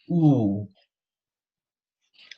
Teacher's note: this is a long sound first of all the lips are rounded